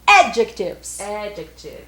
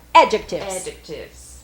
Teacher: a sílaba tônica é a primeira